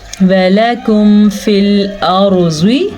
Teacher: رول کے حساب سے لام اور کاف دونوں باریک پڑھے جاتے ہیں